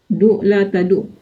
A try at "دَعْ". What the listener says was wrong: Bukan du, tapi do. Wadoa yado.